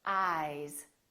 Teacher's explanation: these two words ice eyes listen to the difference ice eyes this s is actually pronounced as a z sound